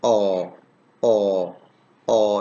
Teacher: are coming from the back part of the vocal tract and it's between half close and half open and rounded position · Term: long vowel